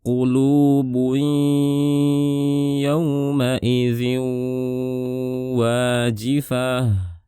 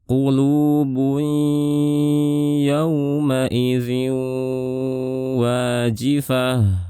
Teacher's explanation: Ini disebut dengan idgham bi gunnah, suaranya kita gunnahkan. Jadi saat melafalkan ya, suaranya dibarengi dengan gunnah.